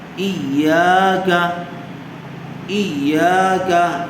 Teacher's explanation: یا کو کھینچیں گے اس لیے کہ الف مدہ ہوگا، اور کاف کو جلدی پڑھیں گے اس لیے کہ کاف کے اوپر زبر ہے، ایاکا، یا زبر یا، ضا نون پیش ظن، یظن، نون پیش نو، یظن، سا میم پیش سم، میم زبر ما، ثم، حظ، حی، علی، ایاک، یا یظن، ثم۔